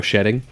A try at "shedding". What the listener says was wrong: shedding, like you said shitting. Shedding.